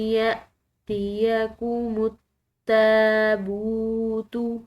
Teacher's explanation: با کے بعد واو ساکن آ رہی ہے، تو اس کو ہم نے 1 الف کے برابر کھینچ کر ادا کرنا ہے